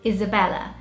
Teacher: The British way, you like linger a little bit more on the L. So it's more sort of, your tongue comes out more to pronounce Isabella.